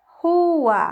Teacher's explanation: a gente abriu a boca duas vezes então lá fica separado do u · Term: hiato